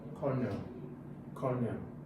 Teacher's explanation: The stress is on the first syllable. Cornel. You can see that the first syllable has a longer stress to the second one, so the stress is on the first.